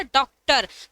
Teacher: तो जैसे डॉक्टर कहते हैं हमारे होठ की आकृति थोड़े गोल हो जाती है। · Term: आगत आ